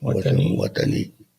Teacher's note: there's more emphasis on that second syllable